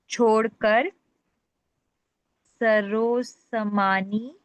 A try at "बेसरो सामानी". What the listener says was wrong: नहीं, उससे पहले बे है, छोड़कर। बेसरो सामानी यानी कि बगैर सामान के।